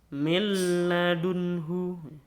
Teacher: Jadi non mati seperti tidak dibaca tapi langsung masuk kepada huruf lam